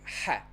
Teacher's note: we have a double r it's pronounced like ha all throughout the country